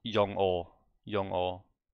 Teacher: You don't connect the G in the end here with the O.